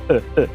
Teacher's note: Vogal central média não arredondada. Basta você abrir a boca e fazer som.